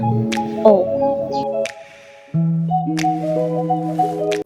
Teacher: Pada huruf O, posisi lidah terletak di belakang. Bentuk mulut bundar, semi tertutup.